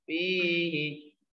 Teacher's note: Nah, hi-nya pendek karena diawali dengan ya huruf sukun